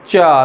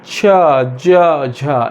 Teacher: जैसे मैं चा, तो चा में स्पर्श के साथ संघर्ष हो रहा है। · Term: स्पर्श संघर्षी